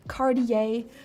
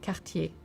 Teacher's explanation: Though the first syllable looks a lot like the word car, try to refrain from going all in on the car or car sound and use the back of your tongue to create the car sound with a very short and precise t at the end. So not Cardier but Kartier often.